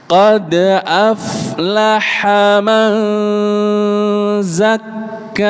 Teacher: Manza ikhfa, tahan agak lama. Zakka, jadi ada tasydidnya Pak Bu.